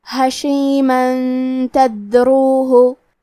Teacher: کلمت حشیمن کے آخری میں میم پہ تنوین زبر ہے، پھر حرف التا ہے کلمت تدروہ، تا حروف الاخفاء میں سے ہے، تو ہم یہ حکم کو غنہ کے ساتھ ادا کریں گے